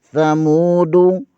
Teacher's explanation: دال کے اوپر پیش ہے، اسے بغیر کھینچے بغیر جھٹکا دیے پڑھیں گے